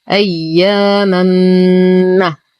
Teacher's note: لدينا حرف مد وبعده الهمز في كلمتين، المد جائز منفصل يمد بالإشباع بمقدار 6 حركات